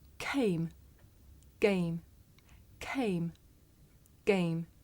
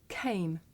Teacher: In English, we say the voiceless sound with a puff of air.